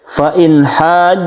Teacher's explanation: membacanya itu jelas dan terang tidak berdengung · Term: izhar halqi